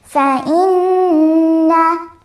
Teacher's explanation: it would be like you stop on the noon for 2 seconds and then you go to the next word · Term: gunna